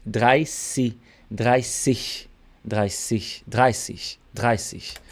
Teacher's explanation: não é Z com som de Z, é de SS.